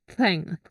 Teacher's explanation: Thank ini cara bacanya lidahnya digigit ya, digigit, tapi jangan terlalu keras ya. Antara gigi atas dan bawah.